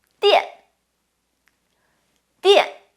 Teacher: 电 has the fourth tone, so it drops.